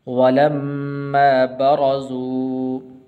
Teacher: را کے اوپر زبر ہے، اس کو پر کر کے پڑھیں گے